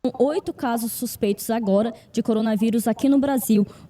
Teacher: You notice that the je isn't there so much. So something that ends with an S isn't going to have the je sound like it will in the European one